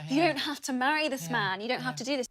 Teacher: uses a long /æː/ vowel in the word 'man'